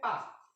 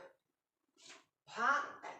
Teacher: ফা এবং পার মাঝামাঝি একটা জিনিস যেটা কখনো লিখে প্রকাশ করা সম্ভব না